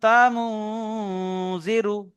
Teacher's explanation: নুন সাকিনের পরে হুরুফে ইকফা 15টি অক্ষরের মধ্যে জাল এসছে, তাই নুন সাকিনের আওয়াজকে নাকে তুলে একালি পরিমাণ গুণনা করে পড়তে হবে, একে ইকফা বলে। জালের নিচে জের এসছে, যেটি হলো হারাকাত, হারাকাতের পড়াকে তাড়াতাড়ি পড়তে হবে, টান দেওয়া নিষেধ।